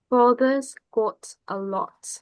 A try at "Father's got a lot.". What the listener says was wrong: Now watch yourself this time and don't let the lips move. I mean, don't let them retract. Father's got a lot.